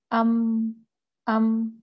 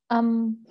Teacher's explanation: और मीम का मखरज क्या है? दो होंठ